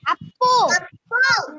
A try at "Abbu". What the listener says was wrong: Not Appu, beta. Abbu. A-B-B.